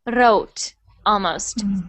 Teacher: there was a little bit of a roll on the r